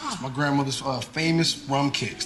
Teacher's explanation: he says grandmother nonrotically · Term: non-roticity